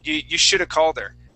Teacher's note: Yeah, should have. Reduction or yeah, we completely destroy have in that sense.